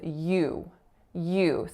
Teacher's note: So it's a Y consonant followed by that moving diphthongized U vowel.